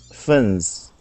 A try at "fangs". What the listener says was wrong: Okay, give me a good ah sound. Fangs.